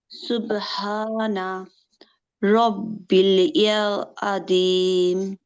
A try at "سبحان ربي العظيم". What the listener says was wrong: রব্বিল কোথায় পেলেন? রব্বিল আছে?